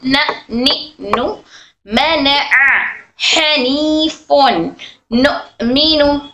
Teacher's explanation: नून नून नून गोल होता है, नू नू, ठीक है। नून हमारी जबान के सामने का हिस्सा ऊपर के दांतों को टच होता है।